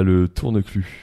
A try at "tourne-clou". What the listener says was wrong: Tourne-clu, hein, pas tourne-cul. Il y a un L. Il y a un tourne-clu avec un L.